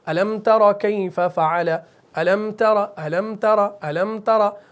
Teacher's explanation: تو اس میں أَلَمْ غنہ اخفا بالکل نہیں ہوگا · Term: اظہار